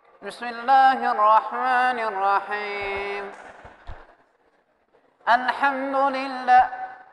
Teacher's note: Semua keluar dari hidung, semua dibuat dari dengung semua, khaysum semua hurufnya.